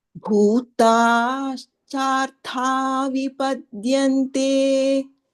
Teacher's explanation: The bhu and the ha are mahapranaha. In between, it is all alpa pranaha.